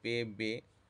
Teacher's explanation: اس میں دونوں ہونٹوں سے ہوا کو روکا جاتا ہے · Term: لبی